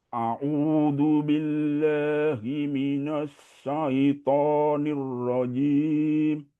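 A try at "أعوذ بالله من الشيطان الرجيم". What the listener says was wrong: Na-nya ditipiskan lagi. Mina bukan mino. Enggak. Mina. Mina. Jadi ditarik sedikit. Minash. Minash Ada perbedaan antara huruf yang ketika kita bacakan mulutnya ini sedikit ditarik. Kecuali dia dalam bentuk huruf tebal, maka bentuk mulutnya itu seperti O dan itu tidak perlu ditarik.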